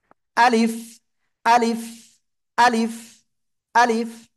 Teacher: এই অক্ষরটা উচ্চারণ হবে মুখের খালি জায়গা থেকে